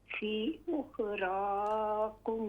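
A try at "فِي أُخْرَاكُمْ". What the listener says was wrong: मद करें यहाँ पे फी पर। फी उखरा, रा फुल माउथ से।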